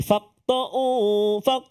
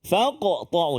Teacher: Qalqalah sughra, tapi kena bunyi. Jangan sampai tak ada bunyi.